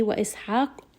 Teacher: Ha is going to be from the middle of the throat.